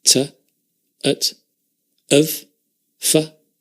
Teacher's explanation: By and large, it's the schwa sound that we're using in the weak form. Not always, but usually.